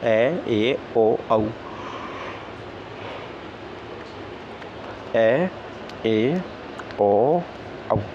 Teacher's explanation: जिन स्वरों के उच्चारण में मुख द्वार आधा खुला होता है उन्हें हम अर्धविवृत बोलते हैं